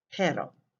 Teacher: the first word you say it with a simple tap sound similar to the english letter d